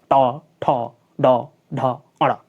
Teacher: हमारी जीभ क्या होती है? ऊपर की ओर मुड़ जाती है और झटके के साथ गिरती है। ऐसे मुड़ेगी और झटके के साथ गिरेगी। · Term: मूर्धन्य